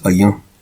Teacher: And the second A is nasalized.